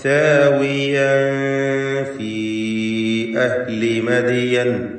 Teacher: ഫീ എന്നതിലെ ദീർഘം മദ് മുൻഫസിൽ ജായിസാണ്. ആ യാഇനെ 4 5 ഹർക്കത്തിന്റെ അളവിൽ ദീർഘിപ്പിക്കൽ അനുവദനീയമാണ്.